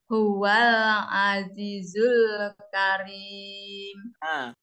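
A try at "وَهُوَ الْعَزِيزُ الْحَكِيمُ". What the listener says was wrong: Wal azizul hakim. Bukan karim, hakim ya.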